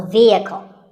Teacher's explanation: the e is a long vowel and the h is silent